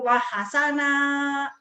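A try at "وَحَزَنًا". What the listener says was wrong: Bukan wahasana itu Z. Wahazana. Hazanah. Hazanah. Wahazana. Bukan wahasana kan. Hazanah. Wahazana.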